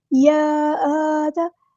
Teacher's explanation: کھڑا زبر ہے تو الف کے برابر لمبا کریں گے